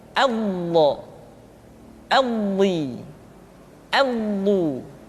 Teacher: Tidak diucapkan do, di, du, tapi bo. Diucapkan dengan menyentuhkan dua sisi lidah kita dengan geraham-geraham atas. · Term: huruf dha